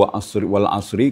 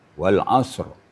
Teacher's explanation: Sadnya juga dimatikan, ro juga dimatikan.